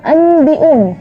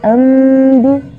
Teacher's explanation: Jadi suara bunyi atau menukar bunyi nun sukun atau tanwin dengan bunyi mim dengan catatan bunyi mim disamarkan menuju huruf ba. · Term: iqlab